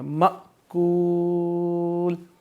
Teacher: حمزہ پہ جزم ہے تو اس کو ہم جھٹکا دے کر پڑھیں گے